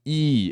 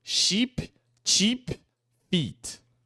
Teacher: É um som longo, tá? I. A gente quase sorri pra fazer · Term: I comprido